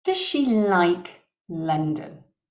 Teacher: the stress in that sentence is on the verb and the object